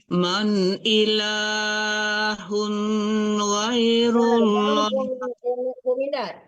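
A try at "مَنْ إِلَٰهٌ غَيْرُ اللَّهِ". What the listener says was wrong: Jangan man ilahun, hun harus jelas ya. Man sama dengan itu man ya. Man ilahun jangan hun ya, benar-benar menekannya ke nun ya. Tidak boleh tertahan juga.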